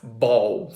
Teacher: So if you take a word such as ball for instance and if you think about the first sound the B sound of this word we're going to have both lips kind of stop in the air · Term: stop sound